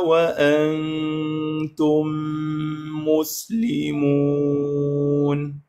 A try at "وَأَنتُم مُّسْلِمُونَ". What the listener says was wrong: شوف هذه، وأنتم مسلمون، صارت التم والميم مسلمون، شوية بيها تفخيم، وأنتم مسلمون. شوف، أريد تنطيني الترقيقات مالتها، الاستفالة. ما أريد هذه، مسلمون، مو